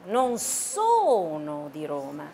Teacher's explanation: 强调动词，不是强调否定的那个副词哈